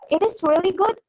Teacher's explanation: Rising intonation on declarative ini dalam bahasa Indonesia bisa disebut juga dengan intonasi yang naik. Nah, gunanya itu untuk memeriksa atau mengkonfirmasi sesuatu.